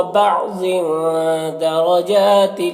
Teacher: گے، بعض ضاد کو پر پڑھیں گے، تنوین میں اخفاء ہوگا، تنوین کی آواز کو ناک میں چھپا کر پڑھیں گے